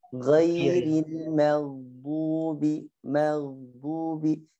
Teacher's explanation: Jangan terlalu lama di melepas gaknya karena dia memang punya sifat rakhawah, maghdubi. Jangan juga dijadikan tawallud, maghdubi.